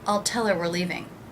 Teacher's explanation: I didn't pronounce the H in her · I reduced the word her by leaving out the H.